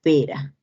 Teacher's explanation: la r este es una vibrante simple sonora · esta es una vibrante simple, sonora. La representación gráfica es de la R y aparece en la palabra pera.